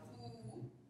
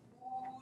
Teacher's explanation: there's a contrast between high back rounded and high back unrounded